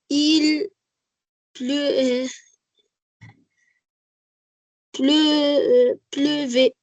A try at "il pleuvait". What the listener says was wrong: très bien. Il pleuvait. Bravo.